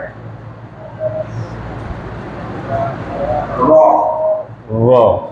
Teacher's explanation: হ্যাঁ, জিহ্বার উল্টা পিঠে উপরের তালুর সাথে লাগাইয়া জিহ্বার আগার উল্টা পিঠ। হ্যাঁ, জিহ্বার আগার উল্টা পিঠ উপরের তালুর সাথে লাগাইয়া র